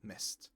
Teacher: Missed is also pronounced with a t at the end. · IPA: /t/